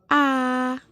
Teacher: posisi tengah terdapat fonem A dengan bentuk mulut tidak bulat dan berbunyi rendah